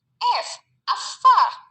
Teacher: cara artikulasinya geseran atau frikatif, dan tempat artikulasinya labiodental. Labiodental itu bibir bagian bawah dan gigi bagian atas.